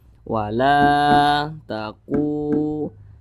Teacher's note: Nah, berarti huruf yang memiliki tanda baca dhammah yang posisinya tepat berada di belakang huruf wa sukun itu dibaca panjang. Maka ku dibaca panjang, lu dibaca panjang. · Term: mad tabi'i